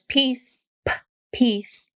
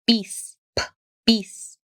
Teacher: the difference between English and Spanish is all about that puff of air